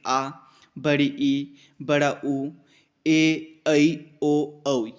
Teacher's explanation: स्वर होते हैं जिसमें हमा बहुत ही अधिक समय लगेगा मतलब जो हमारे हस्व स्वर थे उससे अधिक समय लगेगा दुगना समय लगेगा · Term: दीर्घ स्वर